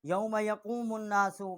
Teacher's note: میم کو ہم نے نون کے ساتھ مشدد کیا ہے اور یہاں غنہ بھی ہم نے کیا ہے